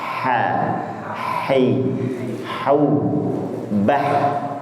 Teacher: Huruf H itu mengalirkan udaranya, jangan sampai bergetar. · H itu aliran udara yang keluar, tidak ada getaran di bagian pangkal tenggorokan dan juga tidak ada getaran di bagian ujung tenggorokan.